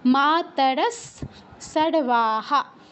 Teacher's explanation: মা তারা সর্বাহা বিসর্গের উপর সর্বাহা আছে প্রথম অক্ষর দন্তস তাই বিসর্গ স্থলে দন্তস হসন্তর মত উচ্চারণ হবে